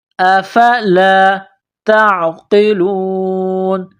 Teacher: تعقلون نقطوں والی تا ہے, اس کو باریک کرنا ہے. تا کو عین کے ساتھ ملانا ہے.